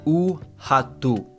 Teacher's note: The R is at the beginning. When the R is at the beginning of the word, it's an H sound.